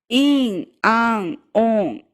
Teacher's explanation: And if the N is at the end of a word or before S, Z, H, W, or R, or the G sound or a vowel, then you're going to do what we talked about in that second video when we discussed the uvular N. Your tongue is going to relax, your soft palate's going to come down towards it, the vowel is going to turn nasal for a moment.